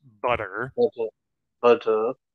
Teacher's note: we have what's called the uh the flap t so it sounds almost more like a d instead of two t's